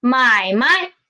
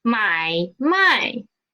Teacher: if i read the second word as the neutral tone then it means business